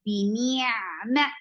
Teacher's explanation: Attach with the ain. Ain will get sifa of the wasut. And it should be from your throat.